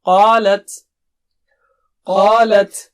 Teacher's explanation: قا اونچا موٹا ہے، رائٹ، اور لت پتلا